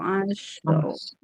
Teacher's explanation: syinnya dia rakwah dan tipis itu harus diperhatikan